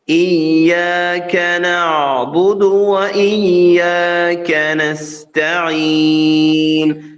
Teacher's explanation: മലയാളത്തിലാണെങ്കിൽ ഇയ്യാക്ക ആ രീതി പറയരുത്. ഇയ്യാക്ക നാവും താഴ്ത്തി വെക്കണം, യായിലും കാഫിലും.